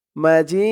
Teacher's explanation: মাজিদ করার কারণে দালের উপরে দুই পেশ তানবিন সাকিন হয়ে গেছে জি বলে তিন আলিফ টান দিয়ে এই দালকে ধরেছে